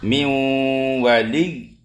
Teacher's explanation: Contoh min wali nun mati bertemu dengan wau ya ee makhrajnya diidghamkan tapi sifatnya di antaranya dengung itu masih ada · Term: naqis bighunah